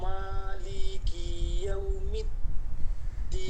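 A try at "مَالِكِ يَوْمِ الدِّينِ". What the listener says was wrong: মালিকি, লিকি, লিকিতে টান দেওয়া যাবে না, দেখেন মালিকি মালিকি ইয়াউমিদ্দিন।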